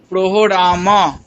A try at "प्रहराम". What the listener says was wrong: प्रहराम। प्रो नहीं, प्र, प्र।